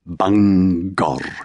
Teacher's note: Welsh tongues held on to every part of the word, even in the case of a straightforward place name like Bangor, separating the syllables, but somehow leaving the G on both sides of the chasm, rolling the final R. Bangor. Welsh speakers didn't positively give it two stressed syllables.